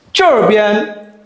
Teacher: as you can see juh is a second tone, okay? Bee an is the first tone, okay?